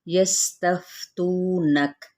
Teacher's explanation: یستفتونک، سین پہ سیٹی، فا پہ ہمس، تو پہ واو مدہ، کاف پہ جب ہم وقف کریں گے تو وقف بالاسکان۔